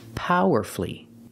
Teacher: the stress is on the first syllable and you have two syllables before F-U-L-L-Y.